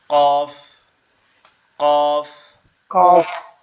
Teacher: আমাদের জিহ্বার গোড়া উপরের তালুর সঙ্গে লাগবে, লেগে আওয়াজ হবে কফ।